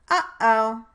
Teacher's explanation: You can feel that your mouth is open. And the sound is happening in your larynx. · The glottal stop is made by briefly tapping the vocal folds against one another without their actually vibrating. Therefore, even though the vocal folds close during the production of the glottal stop, it is categorized as a voiceless stop consonant.